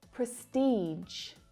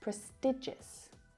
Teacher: We have the longer E vowel sound in prestige and the shorter I vowel sound in prestigious.